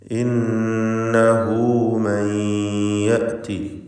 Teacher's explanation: ഇന്നഹു മൻ യഅതി, സാക്കിനത്തായ നൂനും ശേഷം യാവുമുണ്ട്. ഇദ്ഗാം ബിഗുന്ന നാഖിസ് നൽകി യായിലേക്ക് സാക്കിനത്തായ നൂനിനെ ലയിപ്പിച്ച് മണിക്കേണ്ടതാണ്